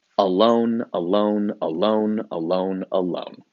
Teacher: Iambic pentameter just means there are 10 syllables per line, and the first syllable and it goes in a pattern: unstressed, stressed, unstressed, stressed, unstressed, stressed, unstressed, stressed.